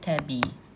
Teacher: Təbii saitlərdən biri düşür digər uzun tələffüz olunur.